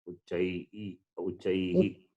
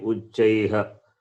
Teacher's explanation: Just the Visarga also taking the sound of the vowel.